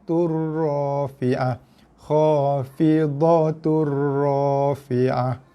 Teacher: Daripada khafidatun disebabkan oleh kerana selepasnya ada huruf ra, daripada tun kita baca dengan tu. Kemudian kita akan tekan pada huruf ra. Kita idghamkan bacaan tu, masukkan ke dalam ra dengan bacaan ra bersabdu turrafi'ah.